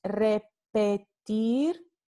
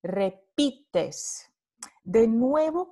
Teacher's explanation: vemos a la vocal media que se convierte en vocal alta cerrada anterior